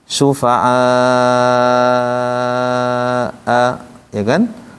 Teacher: Asalnya syufa'a tanpa hamzah. Setelah digabungkan dengan hamzah, panjangnya lebih dari 2. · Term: mad wajib muttasil